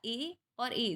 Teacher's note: कंठ तालव्य स्वर है आपका ए और ए, जिसमें कंठ से भी आवाज आ रही है और तालु भी लग रहा है।